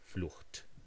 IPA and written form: flʊxt (Flucht)